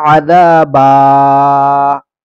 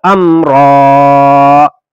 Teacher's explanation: اگر آیت سے پہلے دو زبر ہیں تو یہ ساکن نہیں ہوگا، یہ کھچے گا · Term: کھینچ کر